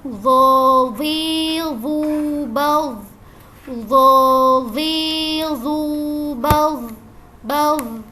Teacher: Dan yang terakhir ada huruf zo. Nah, untuk huruf zo ini dia huruf tafhim, jadi kita bacanya dengan diangkat pangkal lidah kita